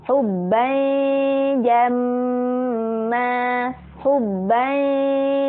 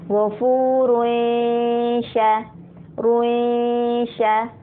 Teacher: Karena memang salah satu huruf di lidah bagian tengah ini adalah huruf ya. Jadi wajar untuk huruf ikhfa-nya memang seperti ada suara Y-nya gitu.